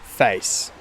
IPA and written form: fæɪs (face)